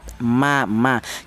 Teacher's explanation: Untuk huruf mim dan huruf ba memang sama-sama kedua bibir, tapi untuk huruf mim dan ba itu dihasilkan dari kedua bibir yang rapat, ma. Jadi kedua bibir nempel ya.